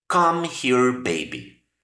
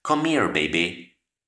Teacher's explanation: esa H cuando la unimos con otro sonido de otra palabra ya no se pronuncia